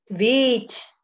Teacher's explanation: alárgame más la I